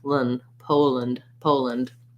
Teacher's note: there might be a little schwa sound there, or you might go right from the L to the N